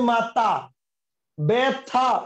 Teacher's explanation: মহাপ্রাণ ধ্বনিটা অল্প প্রাণ ধ্বনি মত উচ্চারিত হচ্ছে সেটা হচ্ছে কি সেটা হচ্ছে ক্ষিনায়ন · থ টাকে আমরা কি করতেছি আমরা থ টাকে বলতেছি ত তাইলে থ টাকে ত বলতেছি তার মানে মহাপ্রাণটাকে অল্পপ্রাণ করে ফেলছি